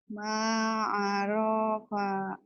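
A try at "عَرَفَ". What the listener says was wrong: Rohnya pendek. Ma'arofa ma'arofa.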